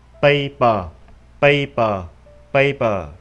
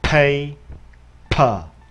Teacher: Bạn thấy gió ra rất là mạnh.